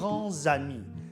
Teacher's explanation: le S de « grand » se prononce Z parce que le mot « ami » commence par une voyelle